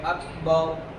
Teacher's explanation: یہاں پر آپ وقف کریں گے اکبر کے اوپر، تو با کے اوپر زبر ہے، را ساکن سے پہلے زبر ہونے کی وجہ سے را پر ہوگی. آپ وقف کریں گے تو پڑھیں گے اکبر.